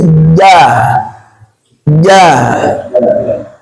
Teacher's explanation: huruf jim najja bersih tidak ada tidak ada desisnya